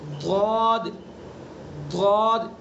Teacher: ضاد زبان کی کروٹ اوپر کی داڑوں کی جڑ